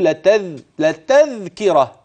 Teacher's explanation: التاء من طرف اللسان والذال من طرف اللسان مع اطراف الثنايا